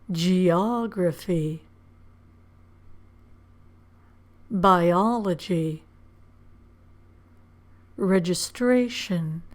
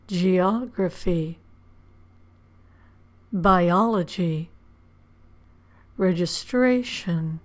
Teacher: the syllable before the suffix is stressed